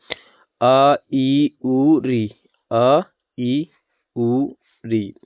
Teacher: ह्रस्व स्वर इनके उच्चारण में एक मात्रा का समय लगता है